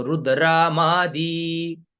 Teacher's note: रू का स्वर नीचे, द्र का ऊपर, म का बीच में